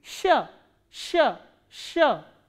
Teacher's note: consonant which is produced when your tongue stretches up word and your middle part of the tongue goes upward to the hard palate then this sound is produced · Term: soft consonant